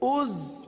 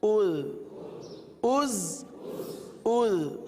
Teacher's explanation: زا میں تو سیٹی کی آواز آئے گی، ذال میں نرمی ہوگی